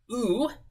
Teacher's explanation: So oo, that vowel, is made with the lips. You round your lips with it.